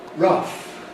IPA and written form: rʌf (rough)